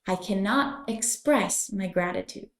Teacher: my gratitude this phrase is used in a more serious tone be sure to link the words can and not so it's cannot and pronounce the X in Express I cannot express my gratitude